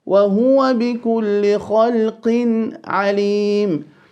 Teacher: qaf, holding a kasra. This should be the weakest form of tafkhim or fullness. So we don't say خَلْقٍ, no خَلْقٍ. · The tanween followed by the ayn will be clear because, as we know, فَالْأَوَّلُ الْإِظْهَارُ قَبْلَ أَحْرُفِ للحلق ست رتبت فلتعرفي.